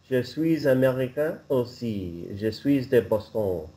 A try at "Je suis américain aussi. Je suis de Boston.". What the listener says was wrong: Oh, so don't pronounce the S on je suis. Je suis de Boston.